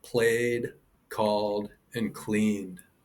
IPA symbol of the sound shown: d